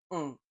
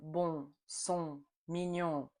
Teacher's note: Our lips are totally round for un. We use the back of our tongue to slightly block the back of our throat and trap some air in our nose.